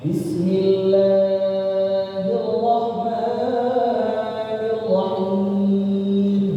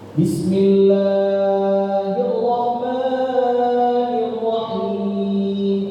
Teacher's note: Dipanjangin itu bacaan Bismillah lebih dari 2 harokat. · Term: kesalahan kecil